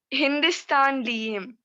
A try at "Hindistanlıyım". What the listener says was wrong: Lıyım. Liyim değil, lı. Lıyım. Lıyım.